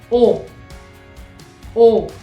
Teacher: la o en francés suena un poquito más cerrada más englobada